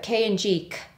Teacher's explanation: sounds that are produced in the back of the mouth so for k and g you are using the back of your tongue it goes up and makes contact with the roof of your mouth in the back so against the velum or the soft palate so the name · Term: velar consonants